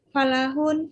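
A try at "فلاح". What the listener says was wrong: Fallah. Fallahun. Fallah. Hunaka syiddah yani.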